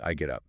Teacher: I get up sounding more like one smooth phrase